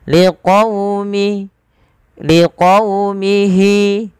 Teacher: Pada fal qaumihi lembutkan dalam pelafalan wawunya. Liqaumi, sembari kita memonyongkan bibir kita.